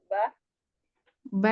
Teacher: Jadi hampir baik nam ustazah ba huruf ba ba di bibir ee dua bibir bertemunya dua bibir atas dan bawah